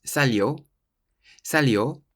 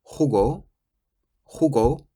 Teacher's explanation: So the accent on the letter O means that's the part of the word that you have to stress. So you add emphasis to the final syllable.